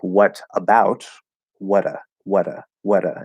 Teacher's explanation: when t or d connects to a vowel at the start of the next word we also do a flap d